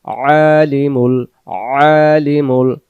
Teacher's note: আইন অক্ষর গলা চাপ দিয়ে উচ্চারণ করতে হবে